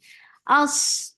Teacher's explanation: Sod will get sifa of rakhava and it is heavy